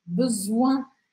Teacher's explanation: apesar de ter OI, a gente tem um N logo depois, o que faz com que o som fique anasalado.